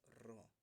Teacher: ये लुंठित वर्ण, जिसको जीभ में बोलते टाइम कंपन होता है। रॉ को बोलते समय गिरता हुआ प्रतीत होता है, मीन्स रॉ।